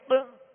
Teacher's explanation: یہ قلقلہ ہے، آواز جو لوٹ رہی ہے